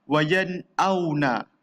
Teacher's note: Nun mati, ingat izhar halki, nun dia yang ada si. Nun mati bertemu dengan hamzah. Kita baca tanpa dengung, jelas bunyi nunnya kan.